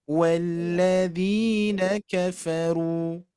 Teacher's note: Nah, ru-nya hati-hati jangan kepanjangan. Ru 2 harokat.